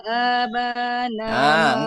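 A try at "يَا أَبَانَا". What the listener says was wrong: Enggak. Enggak aba, enggak. A-nya pendek. Aba.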